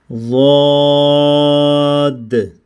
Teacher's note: next letter ہے ضاد، ضاد کو ادا کریں گے، یہ بھی مستعلیہ لیٹر ہے، ہم نے اس کو بھی بولڈ کرنا ہے، موٹا کرنا ہے، ڈیپلی وائس پڑھنا ہے، اور اس کی ادا کرنا، جو اس کا مخرج ہے وہ زبان کی جو کروٹ ہے وہ اوپر کی جانب دائیں یا بائیں جانب ہم نے لگائیں گے تو ضاد ادا ہوگا